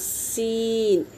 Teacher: सीन पहले सीटी बजेगी फिर हर्फ अदा होगा सीन। शीन बड़ी सीटी।